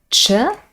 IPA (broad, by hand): tʃ